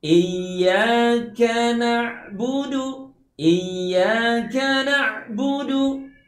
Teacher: Iya, itu ada tasdid, maka pastikan kita baca dengan cara mendabelkan huruf ya secara lembut. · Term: tasdidkan